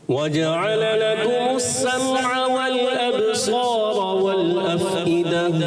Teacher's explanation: समअ मीम में कलकला नहीं, अबसार बा में कलकला करेंगे